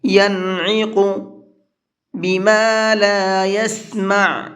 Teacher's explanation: عین کو حلق سے نکالیں گے اور قاف کو منہ بھر کے پڑھیں گے